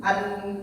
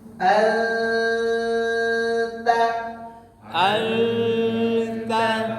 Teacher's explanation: ta itu berubah lidah harus dari awal bunyi nun dengan ta itu dicampur sudah ke makhraj si ta dan bunyi nunnya samar-samar tidak jelas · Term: dengung